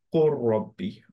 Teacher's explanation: র কে দুইবার পড়লাম, সাদা দিয়ে দিলাম উপরের জন্য, এবং লামকে কমপ্লিটলি আমরা আউট অফ দ্য পিকচার করে ফেললাম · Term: কমপ্লিট মার্জ